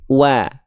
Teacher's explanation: makhrajnya dari dari yang namanya asyafatain apa itu asyafatain asyafatain artinya adalah kedua bibir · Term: huruf wau